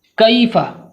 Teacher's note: کاف جڑ زبان تالو کے سخت حصے سے مل کر ادا ہوتا ہے۔ کاف یعنی جڑ زبان کو جب ہم تالو کے سخت حصے سے ملاتے ہیں تو کاف ادا ہوتا ہے۔